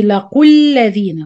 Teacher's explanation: وإذا لقوا الذين آمنوا لقوا the قاف is heavy. When you connect the word لقوا with the word الذين, the واو will be dropped. The ألف with صفر مستدير also not exist.